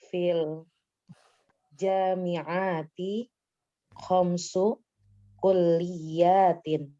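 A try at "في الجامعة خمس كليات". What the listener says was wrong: fil jami'ati, jangan dijadikan jamak juga ini, jangan dipanjangkan. Fil jami'ati khamsu kulliyatin. Fil jami'ati khamsu kulliyatin.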